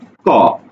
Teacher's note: একেবারে গোড়াতে জিহ্বার গোড়াটা প্রথমে আটকে যাচ্ছে, বাতাসকে আটকে দিচ্ছে। তুমি ক উচ্চারণ করো স্লো করে, দেখো আটকে গেল, আটকে যাওয়ার পরে তুমি উচ্চারণ করছো ক, যখন ছেড়ে দিচ্ছ তখন হচ্ছে ক। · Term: কণ্ঠধ্বনি